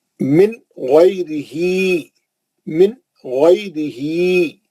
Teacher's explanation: غین بھی کیونکہ حلقی ہے، اوپر کے حلق سے نکلتا، اسی لیے نون کو جلدی پڑھے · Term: نون ساکن کا اظہار